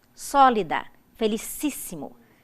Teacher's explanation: o acento tônico recai na antepenúltima sílaba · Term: proparoxítonas